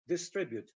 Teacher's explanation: In the dictionary, you'll find that it is stressed on the second syllable, distribute.